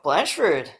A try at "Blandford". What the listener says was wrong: It's Blandford. you got to pronounce the D.